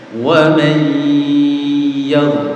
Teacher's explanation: Jadi masuk ke dengungnya, terus dengungnya 2 3 baru keluar. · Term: bacaan dengung